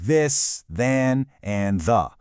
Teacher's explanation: gentle contact right between your teeth. That's what creates that soft vibration.